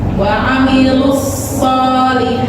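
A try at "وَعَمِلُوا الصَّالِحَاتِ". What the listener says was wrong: Masih monyong sedang.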